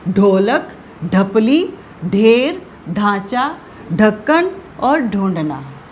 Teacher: ढ जो है इसमें थोड़ा सा ह की आवाज भी आती है